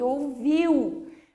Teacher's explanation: no ouviu, a gente fala o U com um pouco mais de intensidade, um pouquinho mais forte